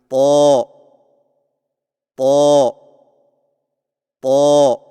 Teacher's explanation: जुबान की नोक को सामने वाले ऊपर के दो दांतों की जड़ से लगाकर और जुबान के पिछले हिस्से को तालू की तरफ बुलंद करते हुए मोटी आवाज में पढ़े · طا کی ادائیگی میں زبان کی نوک کو سامنے والے اوپر کے دو دانتوں کی جڑ سے لگا کر اور زبان کے پچھلے حصے کو تالو کی طرف بلند کرتے ہوئے موٹی آواز میں پڑھیں